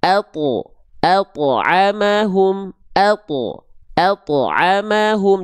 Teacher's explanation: Artinya dia menebalkan atau huruf tersebut dia dibaca dengan suara yang tebal dengan mengangkat bagian pangkal lidah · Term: huruf th